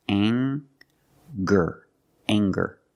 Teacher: We have the nasal sound plus the hard G, the G sound.